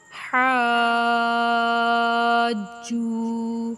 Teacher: ہا حروف مدہ ہے، الف سے پہلے زبر آ جائے، اور جیم بھی حروف مدہ ہے، واو ساکن سے پہلے والے حرف کے اوپر پیش آ جائے تو یہ بھی مدہ ہے۔ تو ہا کو تو کھینچنا ہے مد کی وجہ سے 5 سے 6 الف کے برابر، لیکن جیم کو کھینچنا ہے 1 الف کے برابر۔